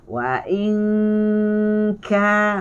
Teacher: ikhfa hakiki adalah dengungnya 2 harakat. Tetapi dengungnya tidak terus masuk pada kaf. Dia masih lagi perjalanan dengungnya bergerak seiring dengan sebutan yang nak sebut kepada kaf.